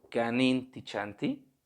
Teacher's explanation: como que se va la entonación hacia abajo, ¿no? Solemos descender nuestra entonación.